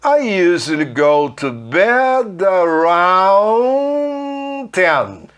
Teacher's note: O D do around vai morrer por causa do T do 10.